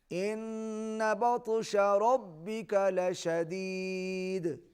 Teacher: ربک را پر لشدید, چونکہ ہم رک رہے ہیں دال پر, وقف کر رہے ہیں, یہاں پر قلقلہ ہوگا